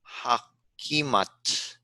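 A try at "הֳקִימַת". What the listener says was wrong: Ho, the first syllable is O, hokimat. But yeah, neither one of those have a throaty sound.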